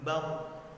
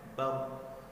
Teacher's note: Bar pada saat sukun dibaca tebal dikarenakan sebelum ra sukun itu berbaris fathah sehingga dibaca tebal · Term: ra tafkhim